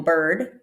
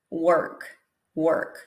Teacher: example bird we go straight from a ba into an er er strong r tight rounded lips and a quick schwa in the middle just to make a transition